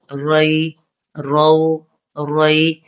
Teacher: را کو پور پڑھیں گے کیونکہ را کے اوپر زبر ہے